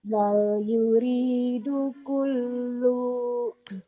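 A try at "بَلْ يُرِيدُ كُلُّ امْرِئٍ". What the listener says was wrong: Bukan. Kolomnya mimnya idhar. Bal yuridu kullum ri'im.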